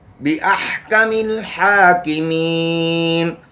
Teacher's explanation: हा है वस्त हल्क से इसको अदा करना है।